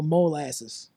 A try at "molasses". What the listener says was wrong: Molasses. Mo. Yeah, you said it too fast.